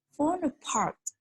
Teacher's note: And as you can see on the slide, fall apart, for example, the primary stress will fall on part, and the secondary stress will fall on fall